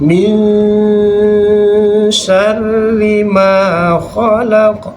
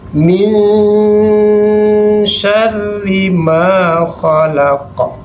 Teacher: Nun matinya kita samarkan, masukkan bunyi shin. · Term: ikhfa